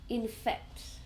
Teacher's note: So, the base is infect, which is the verb. Two syllables. infect. So we stress the second one